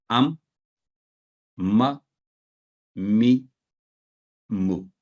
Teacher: दोनों होंठों के खुश्क हिस्सा को आपस में मिलाने से ये हरफ अदा होता है। मीम, तो फतह के साथ साकर हरफ करते हुए अम, तो ये अम, ये भी ना हो अम, यहां भी आवाज को ठहरा देंगे मीम पर।